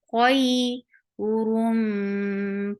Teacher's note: this is idgham with gunna, so keep sound in your nose for a longer time. Mim, ma is 2 counts long.